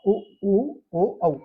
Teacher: आप इनका उच्चारण भी करेंगे तो हमारा जो मुख होता है वो गोल शेप में या वृत्ताकार हो जाता है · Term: वृत्तमुखी वर्ण